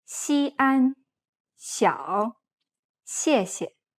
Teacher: This sounds like an S sound mixed with a little bit of an SH sound. It's best to think of this consonant as a constricted SH sound, or as if you were trying to hush an S.